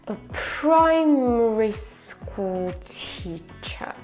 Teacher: And the stressed word is pri like the stressed syllable is pri from primary. Uh in the beginning is a schwa, so it's really really quiet. · We're going down from pri, cuz there's the main stress.